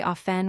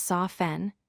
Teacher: many people say often without the T.